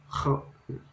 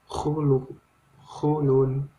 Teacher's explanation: Kha itu di pangkal tenggorokan keluarnya. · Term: makhrijul huruf